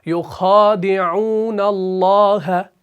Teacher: دال زیر کے ساتھ بھی ہے اور اس کو باریک بھی پڑھنا ہے کیونکہ یہ مرقق ہے